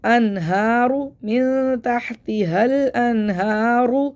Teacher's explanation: را کو موڑا پڑھنا ہے کیونکہ را کے اوپر پیش ہے